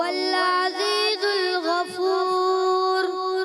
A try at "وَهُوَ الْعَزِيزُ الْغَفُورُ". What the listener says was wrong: آپ نے زا کو ذال پڑھ دیا، وَهُوَ العزیز ہے، عزیز نہیں، کلیئر کریں اور زیادہ، وَهُوَ العزیز الغفور، عزیز سیدھی کے ساتھ، وَهُوَ العزیز الغفور، वहुवल अज़ीज़ुल गफ़ूर। फिर आवाज़ थोड़ी सी क्लियर नहीं होती, तो आप इसको ज़ा पर थोड़ी आपको मेहनत करनी, ठीक है।